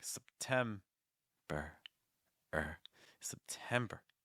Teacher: make the first syllable very weak and finish with an R sound with lots of breath